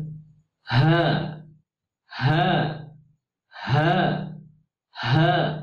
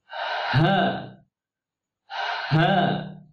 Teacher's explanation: Terlebih dahulu ada aliran nafas sebelum huruf H itu diucapkan.